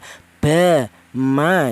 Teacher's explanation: untuk huruf ba dan huruf mem ini dihasilkan dari kedua bibir yang rapat.